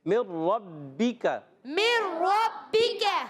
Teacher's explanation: ٹھیک ہے، مر ربی کا، نون کو را سے ملانا ہے، ادغام بلا غنہ، را کو پر رکھنا ہے، را پر زبر ہے، را کو ذرا رک کر ادا کریں گے کیونکہ مشدد ہے. با بھی تشدید والا ہے، اس کو بھی ذرا رک کر ادا کریں گے.